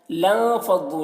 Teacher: لام کو نون سے ملا کر پڑھا جائے گا، الف کو نہیں پڑھا جائے گا۔ لان، اس طرح نون میں اخفا ہوگا۔